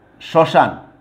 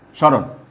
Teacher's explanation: তাইলে যদি ম ফলা যুক্ত থাকে তাহলে কি হবে, ময়ের উচ্চারণটা কিন্তু হবে না বা মানে বিলুপ্ত হয়ে যাবে। তার পরিবর্তে নাকি স্বরের উচ্চারণ হবে, অর্থাৎ অনুনাসিক উচ্চারণ হবে।